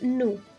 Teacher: Notice how we don't pronounce the S at the end of a word. In fact, we only pronounce the S at the end of a word if the word following it starts with a vowel.